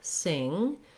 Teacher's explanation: There we have our NG sound where the back of our tongue lifts. So just like the word to sing, if I say sing and then sink, it's actually just like the word sink, because this is an NG sound in sink.